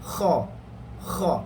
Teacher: kita sebut kha, lidah tak akan naik, belakang saja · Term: infitah